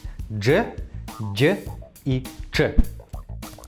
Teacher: это африкаты, то есть согласные, которые состоят из двух звуков. Если быстро произнести звуки «д» и «ж», получится «дж».